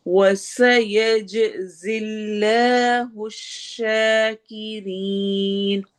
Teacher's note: वाव में होंठ गोल होंगे, सीन में सीटी वाली आवाज